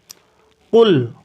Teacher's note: قاف کو حلق سے نکالا جائے گا۔ قل، یا کے اوپر مد ہے، اس کو بڑھایا جائے گا۔